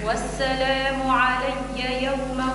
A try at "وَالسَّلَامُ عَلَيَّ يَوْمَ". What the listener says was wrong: ارخي شوي الياء. والسلام علي، علي قابلة للجريان، علي مش علي تولي شديدة. والسلام علي يوم ولدت ويوم أموت ويوم أبعث حيا.